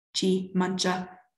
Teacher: if the head has a high-low tone melody, like mancha, food, and follows a modifier with a word final high tone like G, then there's no tone lowering of the head